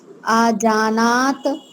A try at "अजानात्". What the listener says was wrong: अजाना अ है, आ नहीं बोलना है, उसको छोटा आ है। अजानात